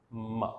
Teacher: दोनों लिप्स जो हैं यहाँ पर क्लोज उनको किया जा रहा है. So it's a bilabial sound. Both the lips, upper lip and lower lip, are involved.